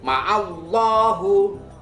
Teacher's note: Sebelumnya ada huruf, yakni huruf ain yang berharokat fathah. Maka pelafalan lafdzul jalalah ini adalah tafkhim, tebal.